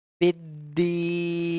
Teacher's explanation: Make sure you're pressing the letter ba because that is a qalqala letter and here it is mushaddad, so we have to read with the force